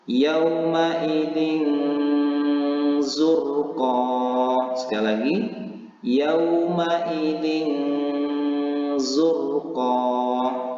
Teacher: dibaca dengan samar-samar seperti bunyi angin disertai dengung · Bagaimana cara membaca ikhfa ini? Yaitu menyembunyikan bunyi kasrotain ini antara izhar dan idgham, atau dibaca dengan samar-samar seperti bunyi eng, disertai dengung, kemudian dibaca itu selama 2 harokat. Mari sama-sama kita praktekkan.